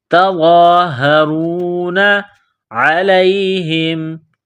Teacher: عین گلے کے درمیان سے زور لگا کر عین کو نکالیں گے، پڑھیں گے۔